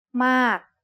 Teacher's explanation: a falling tone begins with a relatively high pitch that drops